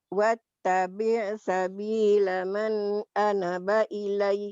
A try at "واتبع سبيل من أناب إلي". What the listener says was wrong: man ana panjang واتبع سبيل من أناب إلي